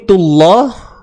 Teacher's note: Baik, kalau kita berhenti pada kalimah Allah ni, tullah. Kalimah Allah ni baca dengan tebal, taghlidh.